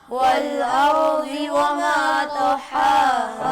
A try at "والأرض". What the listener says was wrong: را کو نہ ہلائیں، ارضی میں را کو ہلائیں مت، یہ ارضی نہ